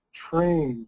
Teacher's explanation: students feel that ch sound because the R is affecting the T sound